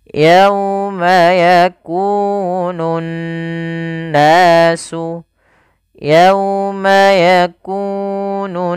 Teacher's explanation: Nah, ini dia ee kita namakan dengan bacaan gunah. Cara membacanya adalah menahan suara n ya sepanjang dua harakat. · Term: ghunah, gunnah